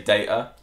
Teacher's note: If you have a slight regional accent maybe cockney or London you might say data drop the T